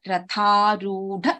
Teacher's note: Tha is a mahaprana, dha is a mahaprana.